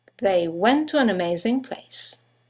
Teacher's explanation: two words one ending with a t the next one starting with a t they run into each other · you have the semi-vowel W that connects the vowels to and an to each other.